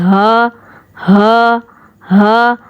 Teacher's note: ہا کی جو ادائیگی ہے وہ اقصائے حلق سے ہے، یعنی حلق کے نچلے والے حصے سے جو ہے ہا بھی ادا ہوتا ہے۔ جب ہم ہا کو پڑھتے ہیں نا، تو ہا کو پڑھتے سمے کیا ہوتا ہے کہ آپ کا جو یہ نچلا والا پورشن ہے، یعنی نچلے والا حلق والا جو سائڈ ہے، تمام پورا کا پورا جو ہے وائبریٹ ہونے لگتا ہے، اندر ایک وائبریٹ پیدا ہوتی ہے۔